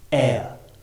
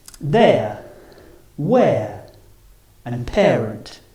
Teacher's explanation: both the vowels are on the same row so the mouth doesn't open or close